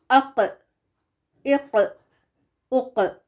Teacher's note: تو قاف موٹا حرف ہے، ہیوی لیٹر ہے، تو اس کو ہمیشہ پر پڑھا جائے گا. قاف is one of the heavy letters so it will always be read heavy with full mouth.